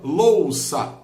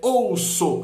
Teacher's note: O, U, é um ditongo, porque O é uma vogal, U é uma semivogal